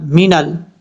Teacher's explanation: نون کو جب لام سے ملائیں گے تو بیچ میں الف کو چھوڑ دیں گے۔ مین ال، بعض اوقات لوگ لام جب ساکن ہو تو لام ساکن کو پڑھتے ہوئے قلقلہ کر جاتے ہیں، جیسے مین ال کی تا، مین ال، یہ جو ل کی آواز آ رہی یہ نہیں آنی چاہیے۔